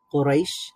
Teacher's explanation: তো লিনের হরফের পরে যদি ওয়াকফ হয় অথবা আমরা থেমে যাই, তাহলে সেখানে একটু টান হয়। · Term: মাদ্দে লিন